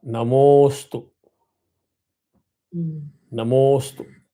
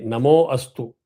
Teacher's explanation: There was nothing like Namo Astu. You either say Namaha Astu or Namostu. Don't introduce a in between. · After Mo, there is the Avagraha, the letter S. So you drag the Mo, which is 2 matra, to 1 more matra.